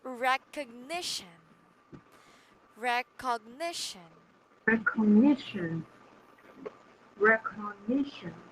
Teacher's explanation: so the third syllable is stressed right